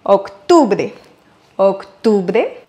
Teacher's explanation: c'est sur le U qu'on va accentuer en espagnol